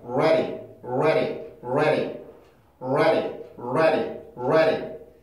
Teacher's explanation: 모음 사이 그리고 강세를 갖고 있지도 않으니까 플랩이 가능합니다 · 이 D발음을 그냥 D발음으로 해도 되는데요. 조금 더 빨리 얘기하기 위해서는 플랩을 해주는 게 조금 더 부드럽게 소리를 만들 수가 있어요